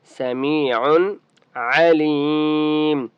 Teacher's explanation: میم کو ایک الف کی مقدار کھینچ کر پڑھیں گے. عن تنوین ہے لیکن یہاں پر اظہار ہوگا کیونکہ آگے عین حرف حلقی ہے تو اسے ہم کہیں گے اظہار حلقی.